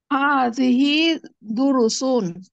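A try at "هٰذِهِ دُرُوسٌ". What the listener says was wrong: দুরুসুন, টান দিয়ে, হাদিহি দুরুসুন, এটি একটি পাঠ, এইগুলো হচ্ছে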